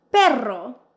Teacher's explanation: This is where you really let your tongue vibrate. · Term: double R